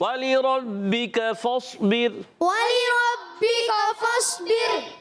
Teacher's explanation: اور را ساکن سے پہلے زیر آ گئی باریک ہو جائے گی